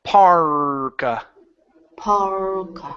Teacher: hold the r a little bit longer